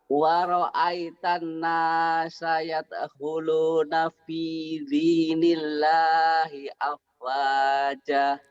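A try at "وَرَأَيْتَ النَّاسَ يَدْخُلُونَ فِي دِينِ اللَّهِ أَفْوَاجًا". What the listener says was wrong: Bapak kurangnya di sini coklat. Kurang nahan. Kedua bapak emang saya tahu bapak priai ya. Jadi dalnya juga rapuh. Ini kan Didi, dada Didi duduk. Terus di sini Bapak ada gajah. Bukan ada gajah, ada gajah bener. Haknya dihilangin.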